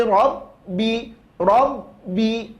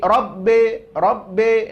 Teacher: baris bawah jangan di Arahkan ke huruf e